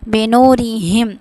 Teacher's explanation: اب ہا کو موٹا پڑھیں گے